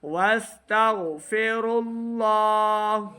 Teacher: غین حروف مستعلیہ سے ہے, غین کی آواز کو ہم نے موٹا ادا کرنا ہے.